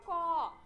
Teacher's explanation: ক শেষে অ টা কিন্তু আমরা বেশ খানিকটা উচ্চারণ করে নিয়ে যাই